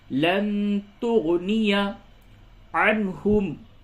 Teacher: نون ساکن کے بعد تا ہے، اس جگہ پہ اخفا ہوگا